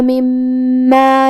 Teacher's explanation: کلمت مما میں میم پہ تشدید ہے، لہذا 2 حرف کے برابر ہم حرف المیم کو پڑھیں